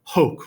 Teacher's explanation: the H is just a puff of air okay does not count towards the meter so in other words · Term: aspiration